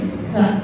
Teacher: Hamas itu cara pengucapannya itu keluar angin. · Kalau kaf itu ngucapinnya itu harus keluar angin. Karena huruf kaf ini kesifatan sifat hamas atau disebutnya hukumi hamas kalau tadi. · Ngucapin huruf ka harus keluar angin ka. Tapi ngucapinnya jangan lebay juga kalau aja.